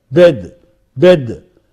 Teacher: A is a front, half closed, between half closed, half open. It is short, it is unrounded. All vowels here are unrounded.